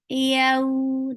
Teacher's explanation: Yeah, it's very soft letter. Your tongue is lifting up towards your palate, but it's not touching it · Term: lean